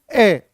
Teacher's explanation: अ तो जीभ के मध्य हिस्से से यह बोला जाता है